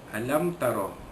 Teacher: Alam tara, mimati bertemu dengan huruf ta, hukum dia izhar syafawi, menyatakan bunyi mimati bertemu dengan huruf ta tanpa dengung. Alam tara, ra dibaca tebal kembali atas, ra tafkhim.